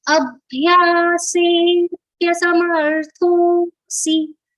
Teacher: we have to prolong the previous vowel sound which is a. Here we have to little bit prolong the vowel sound of a. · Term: avagraha